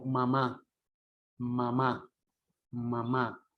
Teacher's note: el sonido, en lugar de salir por la boca, sale por la cavidad nasal, por la nariz.